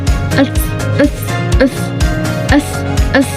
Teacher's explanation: lidah menempel di langit atas. S. Nah, gigi juga dan gigi atas gigi bawah itu hampir menempel